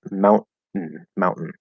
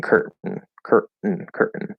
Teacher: the most common default way to say this you have a glottal stop · you have a glottal stop T, and then you do a syllabic N